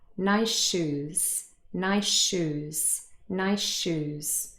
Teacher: So really, this is what we're saying, nice shoes. Obviously, we say it fast and the two sh sounds are linked. They almost merge into one.